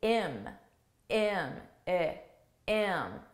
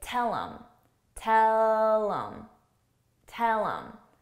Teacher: at a natural speed in English, we reduce sounds that start with an H by just dropping the H sound. So really, when I say it at a natural pace, I actually say im, im, I, im.